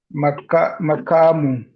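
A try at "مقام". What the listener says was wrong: Or you'll just say makam. You don't have to say makamun. You will write it as makamun. You'll write it as makamun, but you can simply say makam.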